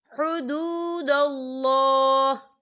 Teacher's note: وقف کی صورت میں ہا جو ہے ساکن ہو جائے گا